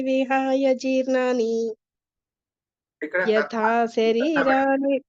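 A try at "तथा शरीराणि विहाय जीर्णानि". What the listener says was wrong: రెండవ లైన్ లో తథా, మొదటి లైన్ లో యథా కదా. వాసాంసి జీర్ణాన్ని యథా విహాయ వచ్చింది కదా. యథా వస్తే మామూలుగా సంస్కృతంలో తథా వస్తుంది. అది ఎట్లయితే ఇట్లా అన్నట్టుగా ఇది తథా. తథా శరీరాణి విహాయ జీర్ణాని.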